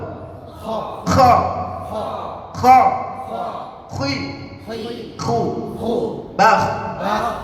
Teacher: kho itu hurufnya di puncak tenggorokan. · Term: huruf kho